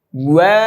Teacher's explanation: ওয়া ওয়া, এটা ঠোঁট গোল করতে হবে, ওয়াও উচ্চারণ। ওয়া, আগে ঠোঁট গোল করবেন, পরে ছড়িয়ে দিবেন, তারপর আবার গোল করতে হবে।